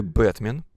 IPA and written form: ˈbɛtmʲɪn (Бэтмен)